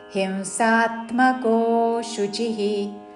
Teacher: అనుస్వారము నాసిక వ ఉచ్చారణ